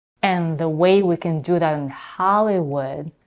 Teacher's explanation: Here she doesn't reduce the first vowel in and as she did before. She keeps the pure quality of the vowel, which is as in cat